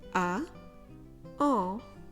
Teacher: Start with the sound A, as in baguette, A. And then round your lips and try and push the air through the nose. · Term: nasal or, nasal en